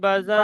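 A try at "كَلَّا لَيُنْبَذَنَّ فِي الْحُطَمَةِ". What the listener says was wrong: বাজান্না, বাজান্না, নুন টান গুন্না হবে, টান হবে না।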